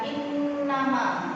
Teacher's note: Di sini ada in dibaca ditekan 1,5 alif, karena ada nun bertasdid maka bacaannya adalah gunna musyaddadah